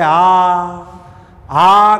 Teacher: आ कहते समय वायु कहीं रुकती नहीं है, मुख पूर्णतः खुला रहता है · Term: विवृत